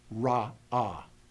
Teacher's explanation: I hear two different vowels I do not want to say raw as if there is no consonant in the center of that word